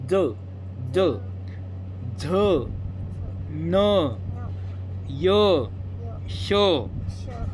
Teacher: ज बघा तुमची जीभ आहे ना त्या तालु लागते बघा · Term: तालव्य वर्ण